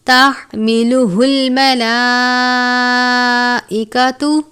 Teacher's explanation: تحملہ الملائکۃ، یہ باریک والی ہا ہے، ایک ہا ہم نے جو پڑھی ہے اس کو ہم گول والی ہا یا موٹے والی ہا کہتے ہیں، اور اس کو ہم باریک ہا کہتے ہیں جو حلق سے ادا کرتے ہیں۔ لام کے اوپر کھڑی زبر ہے، الف کے جتنا پڑھیں گے، بڑی مد ہے، 4 یا 5 حرکات کے جتنا کھینچ کر پڑھیں گے۔